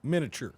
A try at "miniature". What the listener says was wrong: Miniature. leave out the I. I think I've heard it miniature, but I think I say miniature.